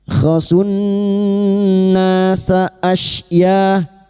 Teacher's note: nun yang bertasdid kita denggungkan selama tiga harakat